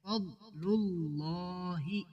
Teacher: لفظ اللہ کو بھی پر کریں گے، موٹا کریں گے